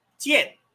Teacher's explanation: You have a dropping vowel, fourth tone.